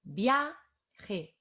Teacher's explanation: La A es la vocal que tiene la fuerza. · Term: fuerza de voz